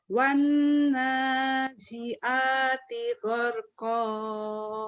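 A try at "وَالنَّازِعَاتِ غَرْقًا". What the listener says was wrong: Bagus, tinggal ainnya aja, Bu. Wanazi'a, tinggal ainnya di sini. Wanazi'ati gharqa.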